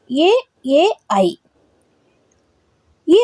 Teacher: ಭಾಗ ಸೇರಿಕೊಂಡು ಕೆಲವು ಅಕ್ಷರಗಳು ಹುಟ್ಟುತ್ತವೆ ಅದು ಎ ಐ ಈ ಅಕ್ಷರಗಳು ಹುಟ್ಟಲು ಕಂಠ ಮತ್ತು ತಾಲು ಅಂದ್ರೆ ದವಡೆ ಎರಡರ ಸಹಾಯವು ಬೇಕಾಗುತ್ತದೆ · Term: ಕಂಠ ತಾಲವ್ಯ ಅಕ್ಷರಗಳು